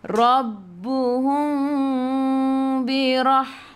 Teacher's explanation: ikhfa syafawi ni kita dengung dua harakat. Nak rapatkan bibir boleh, jangan tekan. Kalau tak nak rapatkan bibir, renggangkan bibir seolah-olah ada sehelai kertas di tengah-tengah.